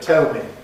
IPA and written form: ˈtel mi (tell me)